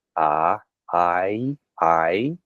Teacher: Now my I sound and uh a lot of American speakers today that I sound is again a diff thong. It glides from a vowel that's very forward. A I I uh Noah Webster, however, and a number of other commentators describe it is starting in the back of the mouth, something closer to it. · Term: I variant